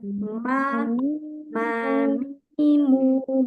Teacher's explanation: ketika cukup kita mengucapkan Ma aja akan ada getaran dari hidung kita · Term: gunah